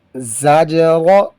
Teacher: زا حروف صفیریہ میں سے، تھوڑی سی سختی سے پڑھیں گے